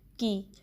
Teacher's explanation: کاف کے نیچے کسرہ ہے، اس کو بھی آپ نے کی ساؤنڈ دینی ہے نہ کہ کے کی